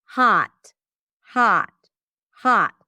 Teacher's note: So yes, in British English, it would be closer to O, hot, hot, hot in American English. So there is no rounding of the lips, no roundness here.